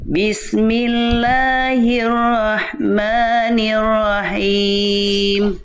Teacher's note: getarannya ro bagus enggak berlebihan tapi tetap harus tegaslugas kuat jelas